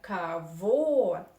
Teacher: It is on the last syllable, on vo. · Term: stress